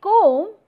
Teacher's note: If you say comb, then you will be able to realize that in comb, the vowel O is rounded. Rounded means that your upper and the lower lip gets rounded while producing the sound. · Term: rounded vowel